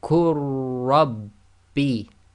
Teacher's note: Joining the qaf directly to the ra, the lam is completely ignored.